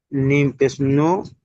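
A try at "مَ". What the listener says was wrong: মিম পেশ না মিম জবার মিম জবার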